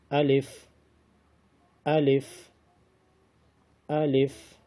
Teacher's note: الف منہ کے حالی حصے سے ادا ہوتا ہے.